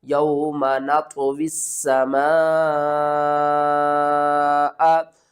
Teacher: مد متصل ہے، 5 الف کے برابر کھینچ کر پڑھنا ہے